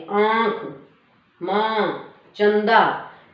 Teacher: फिर है अनुनासिक, यानी कि जिसमें ऐसे चंद्र बिंदु जो बोलने में क्या है हमारे गले से और नाक से आवाज आती है